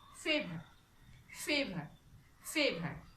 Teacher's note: So, the last R sound will be silent. · while uttering or pronouncing the word, you should remain silent when the sound R comes. It is called British style.